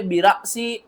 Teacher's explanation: हमज़ा जो है वो साकिन है, और जब भी हमज़ा साकिन होती है झटके के साथ पढ़ते हैं,